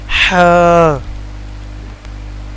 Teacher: اس کو ہم سانس کے ساتھ پڑھیں گے۔ اور یہ حلق کے نیچے والے حصے سے ادا ہوتا ہے